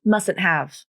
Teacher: Right away, you might have noticed that I didn't pronounce the first T in mustn't.